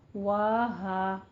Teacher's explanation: فتح قائمہ اور الف مدہ دونوں کو 2 کاؤنٹ کرنے ہیں